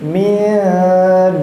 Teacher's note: Nah, ini baru ada nun sukun bertemu huruf dal, betul ya. Nun bertemu dal itu termasuk dari huruf ikhfa. Nah, dal itu termasuk huruf ikhfa, maka di situ nunnya kita baca samar-samar juga.